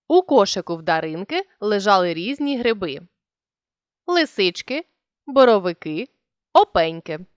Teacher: узагальнювальне слово вимовляємо підвищеною інтонацією після нього робимо паузу і знижуємо голос